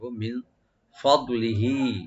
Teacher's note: ফদে এখানে যেন কলকলা না হয়, দোয়াতে শুধু একটু ডিপ করে করতে হবে।